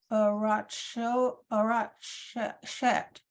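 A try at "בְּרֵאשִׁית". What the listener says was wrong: Bereshit. And remember, the aleph is silent. So there's no vowel under there. There's nothing. So it's bereshit. Just skip over the aleph.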